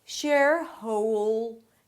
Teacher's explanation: the dark L blends in with the O as in go